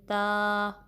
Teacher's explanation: آپ کی جو زبان کی نوک ہے اوپر کے دانتوں کے جو جڑ ہے اس کو جب ٹچ کرے گی تو تا ادا ہوگا